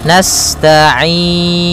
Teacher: pada lafal ain ada bacaan mad arid disukun, yaitu boleh memanjangkannya 2 harokat, 4 harokat ataupun 6 harokat. · sifat sinnya sempurnakan dengan mengalirkan nafasnya.